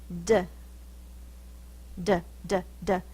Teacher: my tongue is tapping on the roof of my mouth that reminds me of a drum